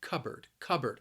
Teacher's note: Notice that the word is spelled with a P, but when I say it, it sounds a little more like a B sound.